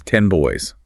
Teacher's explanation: the M sound is made with the lips, and the very next sound is B in boys, which is also made with the lips